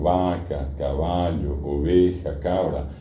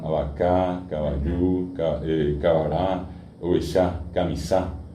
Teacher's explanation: Yo digo vaca, caballo, oveja, cabra. Y cuando se guaranizaron, el ritmo del guaraní es agudo